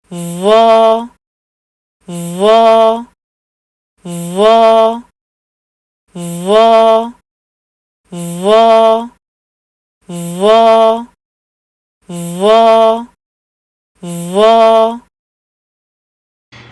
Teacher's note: ساتھ میں آپ نے شیشے میں دیکھنا ہے کہ کیا آپ کہیں ہونٹوں کو تو استعمال نہیں کر رہے اور آواز جو او ہے وہ ٹھیک سے آ رہی ہے کہ نہیں آ رہی ہے. تو او کی آواز آنی چاہیے اور ہونٹ استعمال نہ ہوں